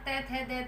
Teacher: दंतोष्ठ के अंतर्गत इन व्यंजनों का उच्चारण करते समय हमें जीभ ऊपर के दांतों को छूती है